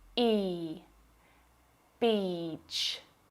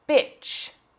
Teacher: If you mispronounce this long vowel sound and use the short I sound, you'll say bitch.